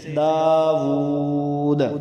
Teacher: قلقلہ آواز کے اچھالنے یا ہلانے کو کہتے ہیں. تو وقف میں دال پہ قلقلہ کریں گے